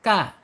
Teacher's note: ujung lidah menyentuh langit-langit yang berdaging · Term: Kaf, kaf